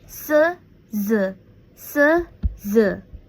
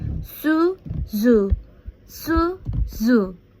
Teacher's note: Se and z form when the tip of tongue touch or almost touch the alveolar ridge. S is a fricative alveolar voiceless. Z is a fricative alveolar voice. Both consonant is a fricative alveolar, meaning the airstream is a compressed and pass through a small opening in the mouth.